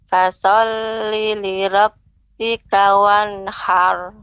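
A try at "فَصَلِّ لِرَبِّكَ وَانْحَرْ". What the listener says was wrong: Ra di situ tebal juga Ibu. Ra-nya tebal. Fasalli li rabb. Fasalli li rabb.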